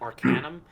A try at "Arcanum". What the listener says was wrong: the A is pronounced with an O. It's Arcanum.